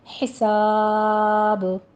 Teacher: وقفے حذف کے ساتھ ہی ہمارا با جو ہے یہ ساکن ہو جائے گا، تو یہاں پہ ہم با کے اوپر قلقلہ کے ساتھ وقف کریں گے